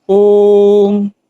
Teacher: प्लुत इसके उच्चारण में बहुत अधिक समय लगता है, जैसे ओम। इसको लिखने के लिए ओ के आगे हिंदी का 3 बना दिया जाता है।